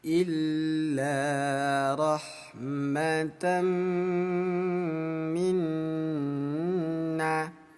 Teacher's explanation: Jadi hukum idgham bi gunnah dan hukum gunnah cara bacanya sama ayah bunda. Kita tahan, ketuk dua kali, dengung.